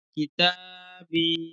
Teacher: ইয়া সাকিনের ডান দিকে জের আছে, সেটি হলো ইয়া মাদ্দা। ইয়া মাদ্দা একালিক পরিমাণ টান দিয়ে পড়তে হয়।